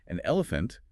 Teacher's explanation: an elephant links smoothly with that N sound, acting as a connector.